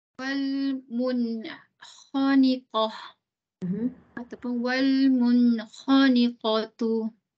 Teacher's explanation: Wal dia izhar qamari. Mun izhar halki. Nun sukun bertemu dengan kha.